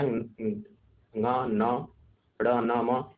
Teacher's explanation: ये इनका उच्चारण स्थान जो होता है वह नासिका होता है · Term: अनुनासिक